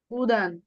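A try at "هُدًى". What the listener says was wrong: ও, মাশাআল্লাহ।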